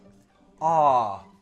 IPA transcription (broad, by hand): ɑː